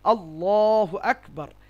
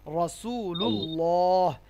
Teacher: তাহলে আল্লাহর লামকে মোটা করে ভারী করে উচ্চারণ করতে হবে মানে বোল্ড সাউন্ডে উচ্চারণ হবে যেমন আল্লাহু আকবার পেশের উদাহরণ যেমন